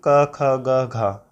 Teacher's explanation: क, ख, ग, घ ये जितने भी है वर्ग, क, वर्ग ये इसका उच्चारण स्थान होता है कंठ